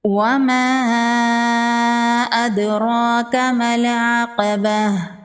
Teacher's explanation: دال حروف قلقلہ میں سے ہے، دال ساکن پر قلقلہ ہوگا۔ · مد منفصل ہے، 3 سے 4 الف کے برابر کھینچ کے پڑھیں گے۔